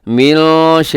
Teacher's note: यहाँ नून साकिन के बाद शीन है, तो यहाँ भी इख्फा है।